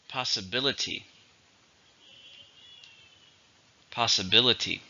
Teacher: It has 5 syllables, stresses on the third.